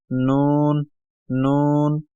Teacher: मिलाने से जो है मीम अदा होता है मीम मीम नून जबान का किनारा और ऊपर वाले दांतों के जो मसूड़े है वहां पर जबान का किनारा लगाने से ये नू अदा होता है